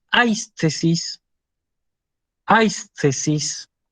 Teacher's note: Fíjense que yo acentúo sobre la alfa, pese a que el acento, como podemos ver, está escrito sobre la iota.